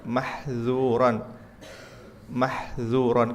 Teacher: yang dikata mahzura harus infitah. Dibuka dan lidahnya mendatar,